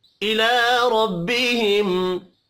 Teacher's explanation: रब्बिहिम रा जबर की वजह से पुर पढ़ा जाएगा। मीम साकिन के बाद या है, इज़हार शफ़ी होगा, गुन्ना नहीं होगा।